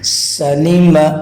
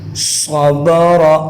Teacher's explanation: سین کو ہم پڑھیں گے باریک، صاد کو پڑھیں گے موٹا